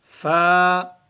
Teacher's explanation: اوپر کے اگلے دونوں دانتوں کی نوک جب نیچے کے ہونٹ کے اندر والے حصے سے لگے، اگلے جو دو دانت ہیں اوپر والے، وہ ہونٹوں کی جو گیلی جگہ ہے نا، تری والی، وہاں لگانے ہیں آپ نے، تو یہ فا ادا ہو جائے گا۔